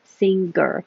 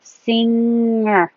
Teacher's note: Kind of slide it back. My tongue in the back is sliding and still keeping contact with the top of my mouth. Singer. Makes that weird noise.